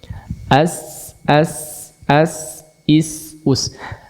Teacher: Si sin itu udaranya itu keluar dari celah yang sangat tipis antara gigi atas dan gigi bawah. Kemudian ada lidah, ada ujung lidah di sejajar dengan gigi bawah itu.